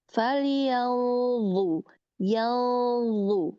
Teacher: Nun sukun ketemu sama dha ya. Nah, di sini dia ini ikhfanya yang mengikuti hurufnya. Jadi hurufnya harus lebih ditebalkan makhrajnya.